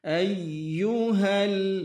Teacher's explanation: ini huruf ya tasydid harus ada hentakannya